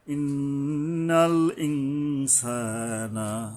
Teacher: এই নুনের উপরে ইকফা করতে হবে অনুস্বর যোগে।